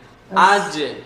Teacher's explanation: সুকুন আজক >> যেহেতু এটা হচ্ছে পাতলা হরফ তাই মোটা না এজন্য এটা অর্ধ কাসরার মত অর্থাৎ সাউন্ডটা নিচের দিকে থাকবে